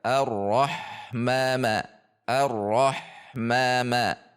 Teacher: Ma dibaca dua harakat. Mad thobbi'i tidak boleh lebih. Jika lebih maka itu menjadi lahann.